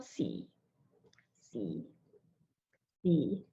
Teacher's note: So it's very low and it's supposed to be flat as well. So it doesn't rise or anything.